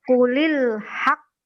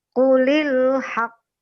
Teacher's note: Jadi kita tahan dulu baru dipantulkan. Itu qalqalah besar.